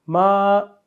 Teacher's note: صرف جو میم کے اوپر کھڑی زبر ہے اس کو لمبا کرنا ہے ایک الف کی مقدار تک